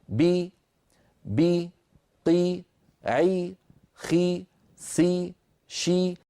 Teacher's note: كل هذه الحروف لما نطقتها انخفض الفك السفلي قليلا وصاحب ذلك ارتفاع لوسط اللسان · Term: حرفا مكسورا